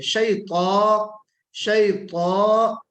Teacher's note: دیکھیں تا نکالنا ہے، موٹا حرف ہے، لیکن موٹا حرف نکالنے کے چکر میں شیطان نہیں ہونا چاہیے، واو نہیں لگنا چاہیے